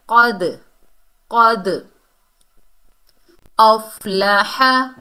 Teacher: क़ाफ हुरूफ़ इस्ताला में से है, मोटा अदा होगा, और दाल जो है हुरूफ़ कलकला में से है, साकिन हालत में आ रहा है, तो इसकी डबल साउंड आएगी, जुम्बश पैदा होगी, हरकत पैदा होगी।